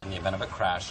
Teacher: link the final consonant sound in event with the vowel sound in the event of